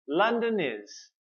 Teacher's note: In this one, if I say London, it's important. If I say is, it's not important. Normally we give it a weak sound like the schwa. London is, not is.